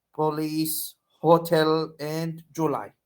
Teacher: and pronounced with stress on the last syllable in standard English in African-American English they might have stress placed on their first syllable